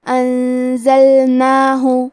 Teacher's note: زے حروف الاخفاء میں سے ہے اور اخفاء کا معنی ہے چھپا دینا، تو ہم نون ساکن کو چھپاتے ہوئے اور غنہ کے ساتھ یہ حکم کو ادا کریں گے